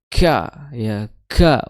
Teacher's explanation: pangkal lidah bertemu dengan perbatasan langit-langit yang bertulang dan langit-langit berdaging, atau langit-langit yang lunak atau langit-langit yang keras, ya itu ka, ya ka, wal ku, ya.